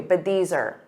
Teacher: you can take R and make it an unstressed ER that's what native speakers commonly do